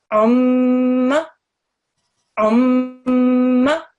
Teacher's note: We're going to press down on it. And we're also going to make the sustained nasal sound, the ghunna, for 2 seconds.